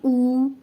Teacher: حمزہ پیش واو ساکن او، ٹھیک ہے؟ یہ واو مدہ بن جائے گا، اس کی آواز تھوڑی سی لمبی ہوگی، اس کو کھینچ کر پڑھیں گے